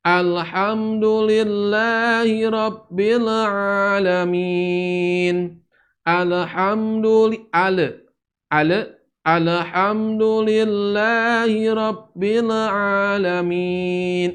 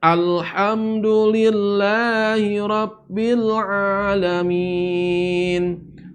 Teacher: Alhamdu, lamnya tidak boleh mantul.